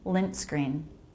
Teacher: It's different from lin screen, where there's no break. We need that little break. Lint screen. That little stop to know a T was there.